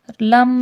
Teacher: لم میں میم مشدد غنہ ہوگا